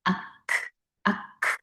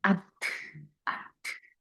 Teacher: 함스라서 얘들은 이제 공기가 뒤에 탁 터지는 소리가 나요. 그래서 아크, 아크 할 때 바람 팍 나오죠, 그죠?